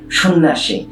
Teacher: যুক্ত ব্যঞ্জনের সঙ্গে যখন জফলা যুক্ত হয় ওই জফলারও কোনো উচ্চারণ হয় না